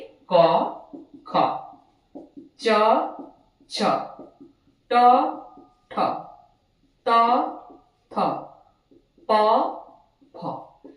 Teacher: अघोष इन वर्णों के उच्चारण में हमारे स्वर तंत्रियों में कंपन नहीं होता